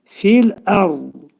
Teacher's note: Dil iki dişin arasına girərək dad hərfini deyirik